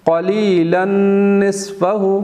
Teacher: تنوین کے بعد نون آیا تو اب یہاں بھی ادغام غنہ کے ساتھ